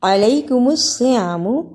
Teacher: علیکم الصیام سین سے نہیں پڑھنا، شد اور صاد دونوں کو صحیح ادا کرنا